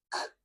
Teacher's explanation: air can explode out C that's how we're making that sound there's no vibration at our throat for the k sound · of that little punching bag in front of the uula and for a split second we stop the air with our tongue let a little bit of pressure build up behind our tongue and then we relax our tongue and the air can explode